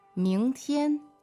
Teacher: second tone and first tone